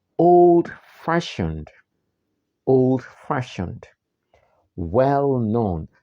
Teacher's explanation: The main stress is on the second part of the word.